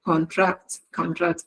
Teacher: when it is used as a verb the stress is on the second syllable